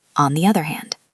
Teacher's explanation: Native speakers often connect the and other, so it sounds like the other. And the D at the end of hand is often silent, so it sounds like on the other hand.